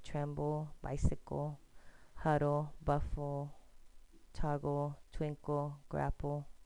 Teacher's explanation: we don't see a vowel between the consonant and the L, but we hear a schwa.